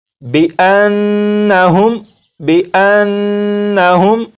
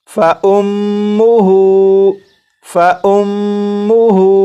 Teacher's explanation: اسی طرح یہ جو لفظ ہے اس لفظ میں یہاں پر میم مشدد ہے، تو میم مشدد میں غنہ کریں گے